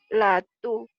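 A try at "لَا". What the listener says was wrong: Lanya panjang. La tu'akhidna.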